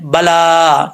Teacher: लाम के ऊपर खड़ा ज़बर है, इसको एक अलिफ की मिकदार लंबा करेंगे। या जो है इसको नहीं पढ़ेंगे, ज़ाहिर बात है, उसके ऊपर जो खड़ा ज़बर है वो हमने पढ़ लिया है, बला, ठीक है।